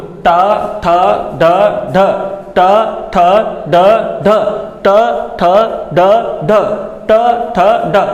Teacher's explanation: तो जीभ एकदम ऐसे मुड़ के तुम्हारी कहाँ लगेगी? मूर्धा के ऊपर जाके लगेगी।